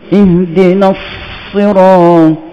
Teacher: Kita kena panjangkan dia punya. Ihdinas, angin tu kena panjangkan. Kena bunyi angin sok dulu.